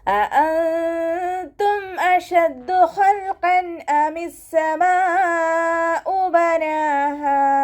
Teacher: അഅൻതും ഹംസയുടെ മഖ്റജ് അഖ്സൽ ഹൽക്കാണ്. രണ്ട് ഹംസയെയും വ്യക്തമാക്കി ഉച്ചരിക്കാൻ ശ്രദ്ധിക്കുക കേട്ടോ.